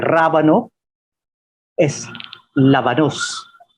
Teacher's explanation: la r en español se convierte en l